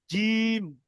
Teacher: জীবের মাঝখান এবং তার বরাবার উপরের তালুর সাথে লাগিয়ে উচ্চারিত হয় জিম